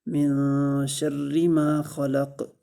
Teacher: خلق، لام کو لمبا نہیں کریں گے اس لیے کہ زبر ہے اس کے اوپر، اور قاف کو وقف کی صورت میں ساکن کریں گے اور اس پر قلقلہ کریں گے